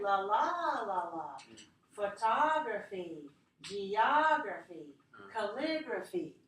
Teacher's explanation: So we have la la la la, 4 syllables. Stress the second one, right?